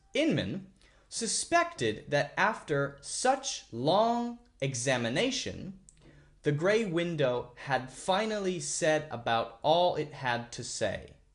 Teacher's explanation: I'm saying the person's name so I'm going to kind of focus on it stress it at the beginning of the sentence